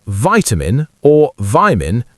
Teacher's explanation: with the I diphthong and the soft, almost D sound replacing the T sound. It's a flap T. It's not quite the full D sound.